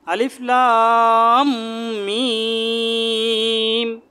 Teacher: এখানে দুই জায়গায় চার আলিফ করে টান আছে, চার আলিফ করে মাদ আছে। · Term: মাদ্দে লাজেমে হারফি মুসাক্কাল